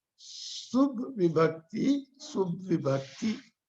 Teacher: Sup plus Vibhakti. Pa becomes the soft consonant ba.